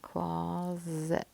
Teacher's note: That is right, my closed syllable. In between two vowel sounds, I'm thinking that S is making a Z sound.